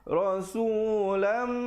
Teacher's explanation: dengungkan di situ dua harakat, idgham bi gunnah, tanwin bertemu mim.